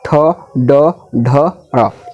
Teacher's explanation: आपका ये मूर्धा, यानी कि मुख से बोलता है, मुख से, ठीक है। ये जो है आपका जीभ क्या है अंदर मुड़ जाएगा